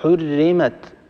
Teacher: الراء مكسورة، يعني الراء مرققة